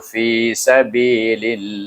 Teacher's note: Maka jalallah kita baca dengan nipis sebab sebelumnya baris bawah.